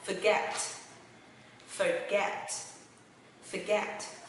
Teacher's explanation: Nó sẽ là âm /ɚ/ Và nó sẽ là /fɚˈɡet/